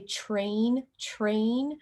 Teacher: sometimes you might hear people put a ch sound at the start of that